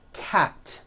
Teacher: Cat ends with an unvoiced T. T, t. 1 cat, 2 cats.